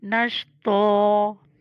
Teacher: ता को हमने मोटा करना है और एक ज़बर पढ़नी है वक्फ की वजह से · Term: मोटी ता